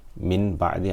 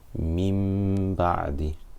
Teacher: I'm not saying Min Ba'di, I'm not saying Mim. Instead, I'm making the sound come out of my nose and I'm holding it for 2 harakat. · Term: Ghunna